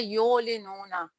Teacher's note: آگے ہے یولنون، یا کے اوپر پیش ہے، عین یہاں پر ساکن ہے، عین کو ہم نے وسط حلق سے ادا کرنا ہے، یا کو عین کے ساتھ ملا کر پڑھیں گے، لام کے نیچے زیر ہے، لام کو نہیں کھینچیں گے، نون کے اوپر پیش ہے اور آگے واو ساکن ہے۔